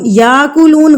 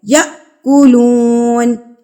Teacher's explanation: یہ الف کے اوپر اگر یہ جزم آ جائے تو جھٹکا دے کے پڑھا جاتا ہے۔ یأکلون، یاکلون غلط ہے، ٹھیک ہے، یأکلون۔